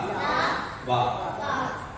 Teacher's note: இந்த எழுத்துதான் கீழ் உதடும் மேல் பல்லும் போட்டணும் அது இந்த எழுத்து மட்டும்தான்